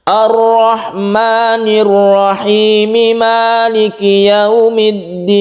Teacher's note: kalau kita itu mewasolkan atau terus antara Ar-Rahmanir Rahim ke maliki yaumiddin, maka membacanya mat tabi'i saja, rahimnya tidak boleh terlalu panjang